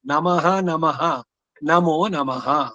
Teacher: ನಮೋ ನಮಃ ಅದಕ್ಕೆ ಹೇಳಿದ್ದು ನಾನು ನಮೋ ನಮಃ ಹೇಳಬಾರದು ನಮಃ ಪ್ಲಸ್ ನಮಃ ಆ ವಿಸರ್ಗ ಹೋಗಿ ನಮೋ ನಮಃ ಆಗುತ್ತೆ